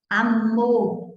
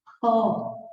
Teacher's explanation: Amor é mais fechado, enquanto pó já é o som aberto.